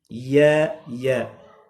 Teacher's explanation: زبان کا بیچ اور اوپر کا تالو، اس سے یا ادا ہوتی ہے